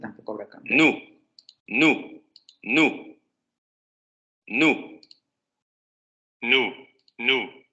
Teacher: el aire sale por las fosas nasales y vibración de cuerdas vocales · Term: alveolar nasal